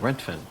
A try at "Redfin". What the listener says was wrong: But you're saying Rentfin. It's Redfin. Okay, so this sound you're making with your mouth, is it red like the color or rent like an apartment?